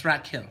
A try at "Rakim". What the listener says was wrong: It's not Keem. Kim. Rakim. Right?